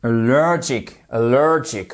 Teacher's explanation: faites-moi bien cette accentuation sur la deuxième syllabe, puisqu'on en a une troisième en plus